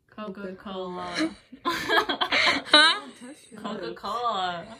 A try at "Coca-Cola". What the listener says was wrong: You don't touch your lips when you say Coca-Cola.